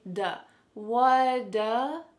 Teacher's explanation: instead of saying do with a nice ooh sound, instead, it sounds like da